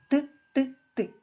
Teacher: відкриваємо ротик язичком торкаємось верхніх зубів і вимовляємо звук т